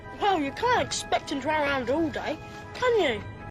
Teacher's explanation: So he uses a falling tone to expect that Harry will agree with him.